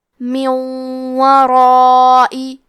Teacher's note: پھر حرف الواو آتا ہے کلمت ورائی. واو حروف الادغام بغنہ میں سے ہے تو ہم یہ حکم کو غنہ اور تشدید کے ساتھ ادا کریں گے · کیونکہ را پہ زبر ہے تو مد الف کا حکم ہے تفخیم، تو ہمیں مد الف کو بھاری آواز میں ادا کرنا ہے. یہ مد واجب متصل ہے.